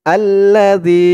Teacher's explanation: জালের উচ্চারণটা একদম নরম পাতলা করতে হবে জিহ্বার মাথা উপরের দাঁতের মাথার সাথে লাগবে